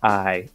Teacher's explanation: And so it starts at an ah and then doesn't travel very far. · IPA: /aɪ/